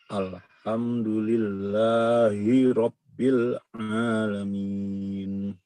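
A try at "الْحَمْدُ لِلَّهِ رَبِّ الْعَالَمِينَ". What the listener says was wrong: Iya, bagus seperti itu bacaannya, namun satu harokat saja. Alhamdulillahirabbil ya.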